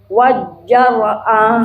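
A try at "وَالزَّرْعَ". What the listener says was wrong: Bukan jim.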